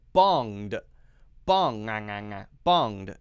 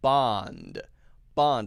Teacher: make it the ng sound, which is in the back, where we lift up the back of the tongue